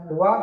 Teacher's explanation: वा का उच्चारण स्थान दंत एवं ओष्ठ होता है।